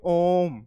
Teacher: ओम को उच्चरित करने पर ओ को हम इतना समय देंगे जितने में स्वर तीन बार उत्सर्जित हो जाए